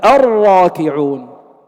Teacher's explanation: إدغام اللام الشمسية في الراء، هذه اللام مدغمة